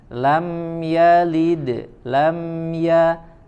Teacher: huruf mim sukun bertemu dengan huruf ya izhar syafawi tidak diiringi dengan gunnah ya tidak diiringi dengan dengung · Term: idhar syafawi